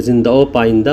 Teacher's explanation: चकि जिंदा में हे की आवाज नहीं निकल रही है तो जब हे को व में के साथ मिला के पढ़ेंगे जिंदा ओ पा इंदा तो यहां भी हे की आवाज नहीं निकलेगी